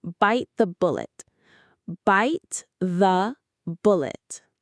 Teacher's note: Notice how the T in bite and the TH in the blend together. We don't say a hard T. It's more like by the bullet.